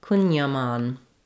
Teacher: So in this word, we have the main stress on the mon syllable and letter A says ah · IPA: /kuŋjɑˈmɑn/